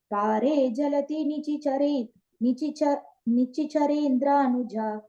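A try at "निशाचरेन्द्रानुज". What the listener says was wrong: in the second line, after Pare Jhaladi, put a pause, and then it's Nishi Charendranuja. Nishi, yeah.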